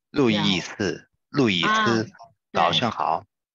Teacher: your name is like 441. The tone is like 441.